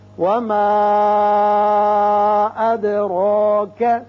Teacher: اد دال کی صفت قلقلہ ادا ہوگی اور را کے اوپر کھڑا زبر ہے، اس کو پر پڑھیں گے